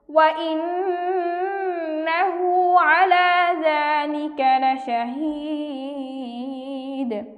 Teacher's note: এখানে নুনের উপর তাসদীদ, ওয়াজিব গুন্না, আমরা গুন্না সহ পড়ব।